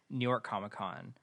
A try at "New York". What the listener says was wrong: You had a weird pronunciation of that. It was like, you know how people say gnocchi? Like, that's how you said New York. You're like, New York? It's called New York.